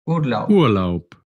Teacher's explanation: la B al final de la palabra se pronuncia como una P. Cuando termina la palabra, como una P.